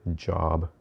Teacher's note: the j, which is a voiced palatal stop. And that is the j sound in the word job.